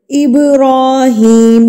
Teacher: را کے اوپر کھڑی زبر ہے تو اس کو ہم ایک حرکت کے برابر کھینچ کے پڑھیں گے